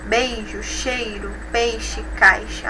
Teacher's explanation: observamos o apagamento da semivogal do ditongo que ocorre na sílaba tônica